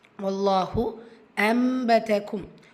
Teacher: இக்லாபுடைய சட்டம்ூ நூனுக்கு பதிலா மீம புரட்டி ஓதுறது. சோ நீங்க குண்ணாவும் கண்டிப்பா செய்யணும்.